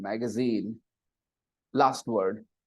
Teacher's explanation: And the stress is on the third, magazine, last syllable